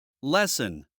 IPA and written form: ˈlɛsn (Lesson)